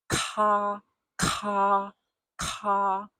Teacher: And then add a small puff of air for ka, ka, ka.